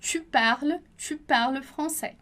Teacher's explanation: S em final de palavra não é pronunciado